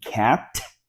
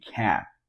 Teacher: So instead of saying cat, you just hold the T at the end and say cat.